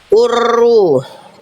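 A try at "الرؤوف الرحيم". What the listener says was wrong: Oke, tapi jangan urru. Jangan getarannya banyak juga. Urru. Urru. Jangan getar banyak-banyak.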